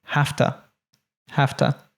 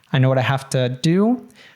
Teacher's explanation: when we have have to oftentimes it will morph to haf-tuh, haf-tuh